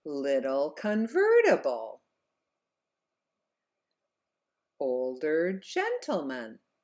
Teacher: the last 3 words were higher in pitch and the vowels were held out longer in the stressed syllables of those words.